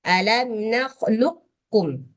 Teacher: Jangan diqqalqalah alam naklukum. Sebab ada idgham di sini enggak boleh qalqalah dia.